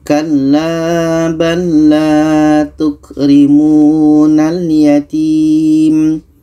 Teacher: Huruf pertama sukun atau mati, huruf yang kedua berbaris. Maka cara bacanya lam ini kita masukkan ke lam yang kedua.